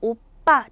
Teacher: 오와 아 모음 사이에서 오빠 된소리가 났고요